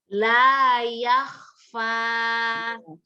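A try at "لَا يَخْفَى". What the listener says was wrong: Tadi yang kurang itu ho-nya kurang keluar udaranya. Harus lanjut langsung gitu ya. Terus gitu, nggak boleh berhenti.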